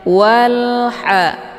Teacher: Cara bacanya, alif lamnya dibunyikan secara jelas atau jelas bunyi L-nya. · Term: alif lam al-qamariyah